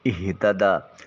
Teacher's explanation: من اہتدیٰ میم کی ادائیگی کے وقت ہونٹوں کا خشکی والا حصہ تری والے حصے کی طرف موڑا جائے گا۔ اہتدیٰ ہا کو اقصی حلق سے ادا کریں گے، یعنی حلق کے آخری حصے سے۔